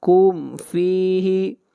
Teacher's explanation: میم کو ظاہر کر کے پڑھیں گے، میم کے اوپر اظہار ہوگا